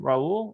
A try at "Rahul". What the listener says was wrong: it's rahu the h is pronounced